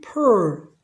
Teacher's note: 이 R은 자음이 아니라 반모음 발음인 어로 해줘야 됩니다. 그래서 이것도 발음이 pearl 이런 식으로 발음이 바뀝니다.